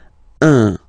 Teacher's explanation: it's what we call the nasal, so it goes in your nose, okay? So if you listen to me, you don't hear any N